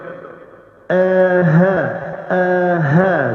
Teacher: Hamzah dan ha keluar daripada pangkal, jadi kena rasa kat sini aa sebut.